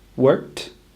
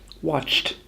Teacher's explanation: If that's too difficult or not possible, we instead use rule number 2, which is to use a t sound, or a soft T. Watched is the same as worked. We add a t, not a d. We can imagine the words were spelled W-O-R-K-T, worked, or W-A-T-C-H-T, watched, to help remind us how to say them correctly.